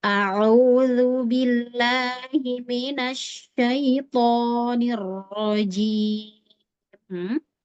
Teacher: Oke, jadi untuk membaca ini kejelasan harokat ditahu ya, nggak ada ke rongga hidung. Minasyaitonirrajim, hanya mim kasrah aja ke hidungnya. Yang lain lebih bebas dari hidung